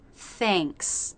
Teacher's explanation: it's much more like the AY diphthong than the AA vowel.